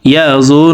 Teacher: তো এখানে দেখুন, জ হরফের উপরে পেশ আছে। তো এই পেশওয়ালা জটি তাসদিদওয়ালা নুনের সাথে 3 সেকেন্ড পরিমাণ গুন্নাহ করে পড়ব। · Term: ওয়াজিব গুন্নাহ